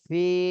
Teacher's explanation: ফিতে এক আলিফ টান দিতে হবে, জেরের বামে জজমওয়ালা ইয়া